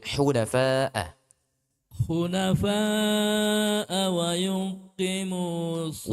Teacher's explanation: Wa yuqimu, ini qafnya dia dua harakat.